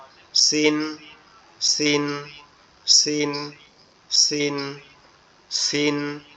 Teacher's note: তো এই সিনটা উচ্চারণটা, আমরা যে ঝা যে অক্ষরটা উচ্চারণ করছি, এই সিনটাও একই জায়গার থেকে উচ্চারণ হবে, জিহ্বার আগা সামনের নিচের দুই দাঁতের আগার সঙ্গে লাগবে, লেগে হালকা আওয়াজে উচ্চারণ হবে, সিসির আওয়াজে সিন, সিন, সিন, সিন, সিন।